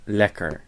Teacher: the consonant is doubled so the first e is short and that r is an English R because it's at the end of the syllable